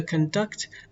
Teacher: Keep the accent on the second syllable to conduct or lead an orchestra and to conduct an interview by asking someone questions.